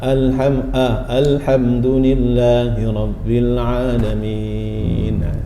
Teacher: terlalu terbuka, 'a', jadi di antara 'e' dan 'a'